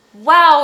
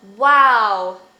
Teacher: it looks like this so basically is a lowercase w and it's labial velar so it's made with your lips and your velum which is your soft palate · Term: glide consonant